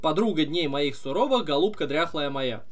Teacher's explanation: В процессе прочитывания стихотворения «Голубка дряхлая моя» мы делаем акцент на вторую «я», как будто бы она тоже ударная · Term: псевдоударным слогом